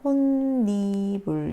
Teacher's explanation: 음절의 끝소리 현상에 대해서 이렇게 돼 있고, 그래서 니은이 첨가되어서 니불 더해지겠죠. 그러면 여기서 발음은요, 니은 때문에 비음화가 일어나서 혼니불 이렇게 발음되겠죠. 자, 실제로 여기에서는요, 음절의 끝소리 현상, 니은 첨가, 그리고 비음화 이렇게 돼서 니은 소리가 나는데요.